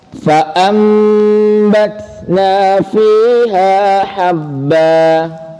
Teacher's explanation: Jadi nun sukun dan tanwin benar-benar berubah menjadi mim. Oke. Bigunnatin dengan guna. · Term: iqlab